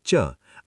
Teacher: आपकी जीभ ऊपर तालु को छू रही है, ये तालव्य है यानी पैलेटल।